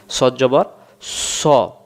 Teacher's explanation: যেমন এখানে সফিরের অক্ষর এবং ইস্তিলার অক্ষর কিন্তু সদ অক্ষর আছে। সদ অক্ষর শীষ সহ মোটা করে পড়তে হয়। সদ জবর স, এমন শীষ হবে।